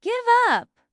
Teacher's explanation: The stress is on up.